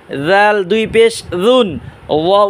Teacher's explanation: জাল উচ্চারণ হবে জিহ্বার আগা সামনে দাঁতের আগা নরম আওয়াজে